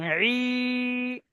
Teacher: খাড়া জের ইয়া মাদ্দার সমতুল্য, সুতরাং খাড়া জের কে ইয়া মাদ্দার মতো একালি পরিমাণ টান দিয়ে পড়তে হবে